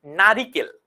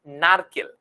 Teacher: এই যে রসইকার এই যে ই ধ্বনিটা বাদ গেল এটা কোথায় ছিল আগে এটা ছিল মধ্যে মধ্যে